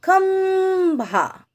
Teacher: जो अनुस्वार की मात्रा है लगी हुई है इनमें, अब उसके उच्चारण में आधे म की आवाज आ रही है।